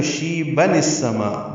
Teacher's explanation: ملائیں گے تو شیبن السما، با کو جلدی پڑھیں گے اور نون کی زیر کو السما کے سین سے ملائیں گے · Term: نون قطنی